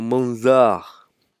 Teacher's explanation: Nous avons la lettre Za qui se prononce avec emphase, comme dans Manzar, paysage.